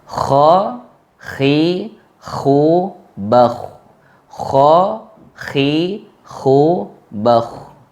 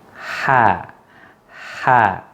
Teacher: Ketika kita membaca kha, kha, kha, kha, yang pertama lidah kita naik ke atas, yang kedua mulut kita tidak tersenyum. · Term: huruf isti'la